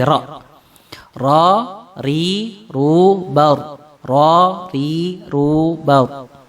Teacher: artinya mengulangi sedangkan menurut istilah yang disebut dengan taqrir ini adalah bergetarnya ujung lidah ketika kita membacanya